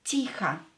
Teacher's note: you can hear that I pronounce this O as A because it's not stressed.